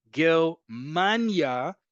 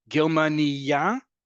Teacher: Germania, emphasis on the penultimate syllable, name of the country. Germania, emphasis on the last syllable, a female German person.